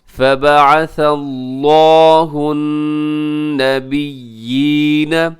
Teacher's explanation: نون مشدد ہے، یہاں غنہ کیجیے گا۔